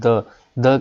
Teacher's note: जीभ हमारी दांत प लगती है